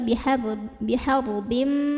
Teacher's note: tanwin kasrahnya ini lebur dengan huruf mim. Jadi bihar bim langsung Jadi bukan bihar bin tapi bihar bim. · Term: idgham bi gunnah